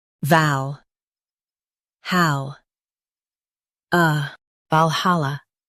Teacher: Stress hal and keep soft.